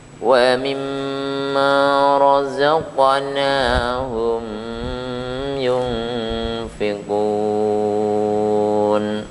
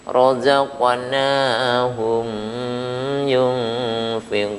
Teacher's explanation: Karena letaknya qaf ada di tengah, razaqa, maka tekanan pada huruf qaf ini tidak sempurna karena segera untuk mengucapkan huruf nun berikutnya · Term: qalqalah sugro